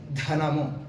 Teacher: అలాగే ధనము అన్నప్పుడు కొంచెం నాలుగు పైన ధ అంటే ద హ, ఈ రెండు కలిపి ఈ యొక్క శబ్దాన్ని చేస్తాయి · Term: మహాప్రాణాన్ని